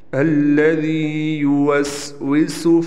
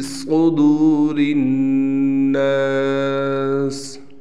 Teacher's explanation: سین باریک ہے، صاد موٹا ہے، اگر اس کو موٹا نہ پڑا تو صاد بھی سین بن جائے گا، صرف فرق یہی ہے کہ صاد موٹا ہے، تو موٹا کر کے آپ نے لازمی پڑھنا ہے۔